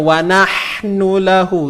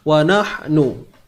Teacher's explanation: Cuma kena ingat nak bunyikan pedas tu, nak hasilkan bunyi pedas tu, sempitkan pada kerongkong, tengah kerongkong. Ingat, huruf ha datang daripada tengah kerongkong. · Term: ha pedas